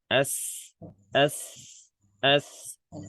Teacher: Ujung lidah, sin ujung lidah sama gigi seri bawah.